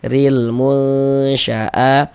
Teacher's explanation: Maka huruf ra ini dibaca tarkik, dibaca tipis.